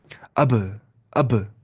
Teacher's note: لب مل کر سختی کے ساتھ علیحدہ ہو ایسے. اب اب مل رہے پھر علیحدہ ہو رہے.